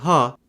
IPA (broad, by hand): ɦ